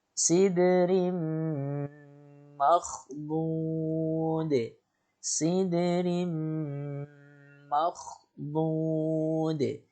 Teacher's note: Di situ ada ro berharokat tanwin kasrotain yang bertemu dengan mim, maka dibaca dengan gunnah 2 harokat.